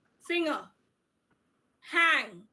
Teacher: you will see that you are just saying G very less, just moving over through it quickly. Or rather, you can say G remains silent, or N or na is the more superior sound over here.